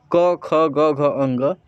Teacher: जब जीभ अपना पीछे वाला हिस्सा इस ऊपरी छत को सबसे नीचे, सबसे पीछे वाले पॉइंट पे टच करता है तो क वर्ग निकलता है